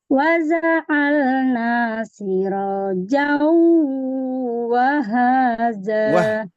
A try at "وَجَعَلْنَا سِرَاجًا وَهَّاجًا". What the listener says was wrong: Sukunkan dulu. Wah. Tasdid.